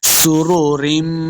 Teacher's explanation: سین پہ سیٹی کی آواز آئے گی، لمع بالکل نہیں کرنا۔ را پیش رو، را کو اوپر پڑھیں گے۔